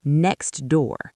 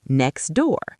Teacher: We don't say the t. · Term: dropped sounds